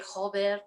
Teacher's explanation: that double r pronunciation that's so guttural